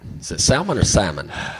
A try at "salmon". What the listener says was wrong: You don't pronounce the L. It's incorrect. Salmon.